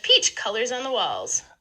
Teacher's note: because this is a statement we get this nice low boundary tone at the tail end · what might be a little more subtle is that there's actually a low star on colors too